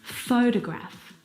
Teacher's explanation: in the first example photograph the first syllable is the stressed syllable you can hear it very clearly